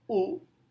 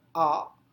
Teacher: saat saya mengucapkan U, posisi lidah terangkat. Tapi saat saya mengucapkan A, lidah itu turun ke bawah.